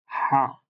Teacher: গলার মাঝখান থেকে উচ্চারিত হবে